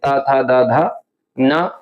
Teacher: इनका जो उच्चारण स्थान होता है वो दंत होता है। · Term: त वर्ग